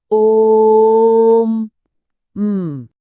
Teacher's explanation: और देखिए ये कितनी अच्छी तरह से उस बात से जुड़ता है जिसे स्रोत में त्रिमात्रिक स्वर कहा गया है, मतलब एक ऐसा स्वर जिसकी लंबाई 3 इकाई है। तो जब हम ओथ्रीम कहते हैं तो असल में हमें ओ को लंबा खींचना होता है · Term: प्लुत स्वर